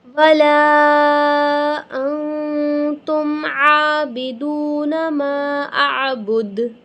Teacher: لا اعبد ما تعبدون ولا انتم عابدون ما اعبد، لام الف مدہ 5 الف کے برابر کھینچیں گے، یہاں پہ ہم اخفا کریں گے، ٹھیک ہے، یعنی نون کی آواز کو ہم کلیئر پروناؤنس نہیں کریں گے، ناک کے اندر چھپائیں گے